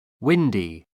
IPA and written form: ˈwɪndi (windy)